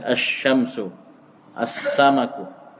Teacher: Kalau alif lam masuk kepada kata yang awalnya huruf syamsiyah, maka lamnya tidak dibaca. Langsung idgham ke huruf syamsiyahnya, dikasih tasydid.